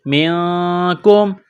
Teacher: نون ساکن کے بعد کاف ہے، حروف اخفا ہے تو غنہ کریں گے